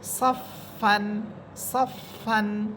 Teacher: আপনাকে উচ্চারণ করতে হবে সফফান সফ আপনি দেখেন আমার উপরের যেই উপরের যে দুই দাত আছে ওই দুই দাঁতের অগ্রভাগ নিচে ঠোটের পেটের সাথে লাগতেছে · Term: ফা হরফ